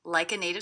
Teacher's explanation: I hear this T as a D because again it's a T coming between two vowel sounds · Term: flap T